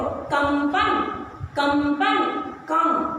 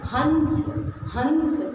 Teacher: तो अनुस्वार, इस प्रकार का चिन्ह बनाना, इसे कहो अनुस्वार, इसे कहते हैं। और इसके उच्चारण में हवा नाक से निकलती है।